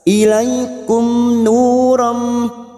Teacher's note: Nu duma diikuti waw sukun 2 harokat. Ram fathah tanwin atau fathatain bertemu mim idgham bi gunnah.